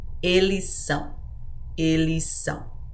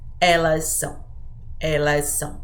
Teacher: Because the plural ends with S and the conjugation starts with S, you can just combine those sounds together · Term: combine S and S